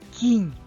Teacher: в слові кінь Ми добре чуємо М'який приголосний нь